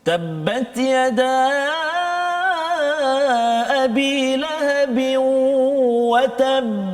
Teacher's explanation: Itu ada sabdu. Ada sabdu. Jadi qalqalahnya lambat sikit.